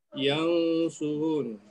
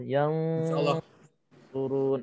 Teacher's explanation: nun mati bertemu dengan sod, maka kita dengungkan